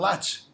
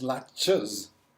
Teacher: So ch is a voiceless sound, voiceless stop, affricate to be technical.